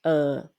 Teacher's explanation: you can see like it's a bit lower than the midtone the low tone or you can say in T at or